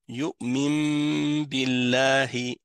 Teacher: Donc on prononcera le nun comme un mime. Et c'est pas rare que un N se transforme en M, même en français, dans certains mots, à cause du B.